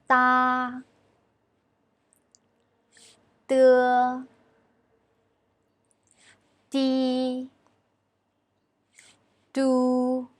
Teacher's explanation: Sounds like phonetic d. Also, it's softer. It's a voiceless consonant. · We notice that when we pronounce these initials, our tip of tongue pushes against the gum of the upper teeth.